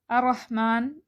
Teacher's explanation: ادھر را کے اوپر تشدید ہے، لیکن یہ را بھی موٹی پڑھیں گے اور تشدید کو ادا کرنا ہے۔ الرحمن نہیں پڑھنا، تشدید کو پراپر طریقے سے ادا کرنا ہے۔